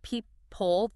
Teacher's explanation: The vowel sound in that unstressed second syllable gets reduced